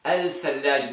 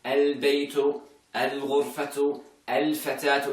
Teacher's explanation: the articulation point of lam, of L, and the articulation of the letter tha, very close to each other, they conflict. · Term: heaviness on your tongue